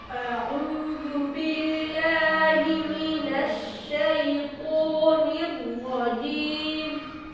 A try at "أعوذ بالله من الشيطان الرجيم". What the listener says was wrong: শাইতান তো আরো মোটা হবে আরো টান হবে শাইতানির রাজিম বলো আর মুখ খোলো মুখ আরো খুলবে শাইতানির রাজিম